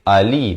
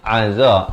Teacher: Hamzah di pangkal kerongkong, ain di pertengahan kerongkong.